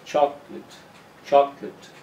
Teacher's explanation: The first syllable is a strong one, so the correct pronunciation is chocolate. Chocolate. The late becomes lit.